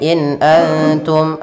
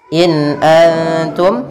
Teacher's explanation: Antum tapi harus jelas dan tidak boleh ditahan kemudian in Antum ada nun sukun kembali lagi izhar halqi bertemu dengan Hamzah maka dia harus dibaca dengan jelas